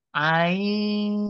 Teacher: nun sukun nya dengungkan ke suara Shad ya dengungan ikhfa Kalau terdengar oleh telinga kita itu seperti suara Ang